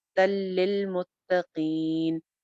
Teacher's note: تو تن کے اندر سے نون ختم ہو رہا ہے، تل للمتقین ہو رہا ہے، یہاں پہ ادغام ہو رہا ہے بغیر غنہ کے، تل للمتقین.